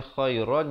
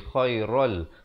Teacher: Dia juga dituliskan secara tanwin yang tidak selari. Di sini asalnya khairan jadi khairal, terus masuk tanpa dengung.